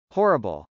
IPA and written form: hˈɔːrəbəl (horrible)